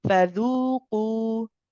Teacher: The qaf can be a bit stronger. So when you hit the makhraj of the qaf, I want you to put a bit more strength in it because it's a letter of shidda. We put pressure in the makhraj.